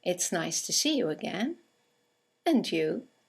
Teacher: and you is a statement it has a falling intonation and it's used to return the compliment or the greeting